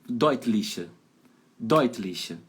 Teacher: sílaba tônica tá em cima da primeira sílaba